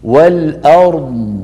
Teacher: هل سمعتم صوت الضاد كيف هو ممتد رخو